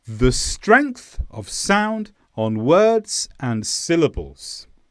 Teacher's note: with the of on and they were all lower they were all quieter and they were a bit quicker too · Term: grammar words